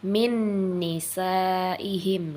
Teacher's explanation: nun mati jumpa dengan Nun hidup maka cara membacanya dimasukkan dengan dengung